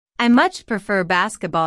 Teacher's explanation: notice how much is stressed to show that the speaker really likes basketball